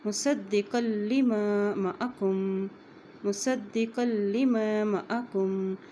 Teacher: قاف کی دو زبر کو لام کے ساتھ ملا رہے ہیں کیونکہ لام کے اوپر شد ہے